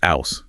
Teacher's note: The H dropping is a classic Cockney trait. House becomes ouse, for example.